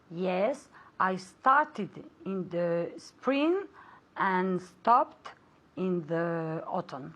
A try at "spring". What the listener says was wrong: Spring, eso es. Spring, la G final hay que decirla, ¿ok? Spring, es también muy fuerte, ¿ok? Spring.